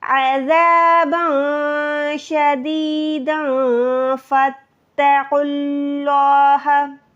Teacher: فا کو ڈائریکٹ تا کے ساتھ ملائیں، الف کو چھوڑ دیں۔ جب بھی تشدید آتی ہے، یہ شد آتی ہے، پیچھے والی نشانی کے ساتھ ملتی ہے۔